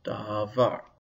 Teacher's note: There's no accent mark, and so the stress is on the last syllable